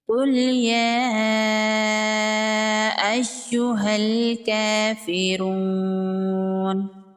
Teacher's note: یہاں پر قاف حروف مستعلیہ میں سے ہے، قاف کو پر پڑھیں گے، مد منفصل ہے، 3 سے 4 الف کے برابر کھینچ کے پڑھیں گے۔ یا پر تشدید ہے، یا کو سختی سے پڑھیں گے۔ ہاں کو ڈائریکٹ لام کے ساتھ ملائیں گے، یہاں پر ان دونوں الف کو نہیں پڑھیں گے۔ · را پر پیش ہے، را کو پر پڑھیں گے · کاف پر کھڑی زبر ہے، 1 الف کے برابر کھینچ کے پڑھیں گے